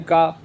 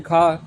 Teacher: कंठ में अघोष अल्पप्राण यानी का, अघोष महाप्राण यानी खा